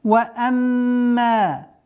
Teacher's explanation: удержание в размере 2 огласовок, назализация.